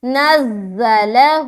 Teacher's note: نون کو زا سے ملا رہے، زا سخت حرف ہے نا، اور سیٹی کی طرح نکلتی ہے